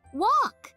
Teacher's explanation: You don't hear the L sound in walk. So the L is the silent letter.